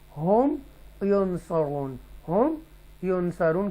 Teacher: then izhar shafwi will take place within the mim sakina, that is here nasalization gunna will not be done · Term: इजहार शफवी